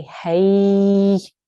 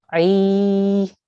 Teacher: the letter before has a kasra, so this is a ya mad. We will say ay and make it 2 seconds that way.